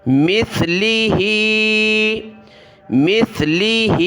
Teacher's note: یہ سین نہیں، اس کو آپ مس سین نہ پڑھیں، سا پڑھیں